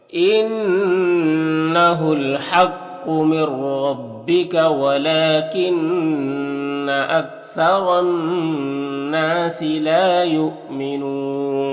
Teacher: یہاں پر حمزہ ساکنہ ہے واو کی شکل میں تو جھٹکا لگے گا